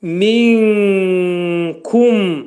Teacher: 3 saniyə İxva-i kubradır. 3 saniyə müddətində nunun məxrəcini kəfdə saxlayırıq. Sanki İxva vaxtı kəfin də məxrəci eşidiləcək. Minkum. Mim hərfini izhar edilir, ağız yumulur.